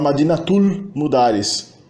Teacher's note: Como na verdade tinha aquele U do nominativo do árabe clássico, muitas vezes até se fala Madinatul Mudaris, que o A do artigo definido cai e a gente ouve ainda o U do antigo nominativo